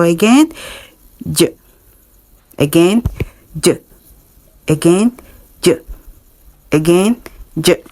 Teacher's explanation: releasing it with an audible friction don't forget to add your voice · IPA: /dʒ/